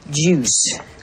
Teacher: Ela começa com j, tendo um U mais prolongado logo em seguida, ju, terminando com S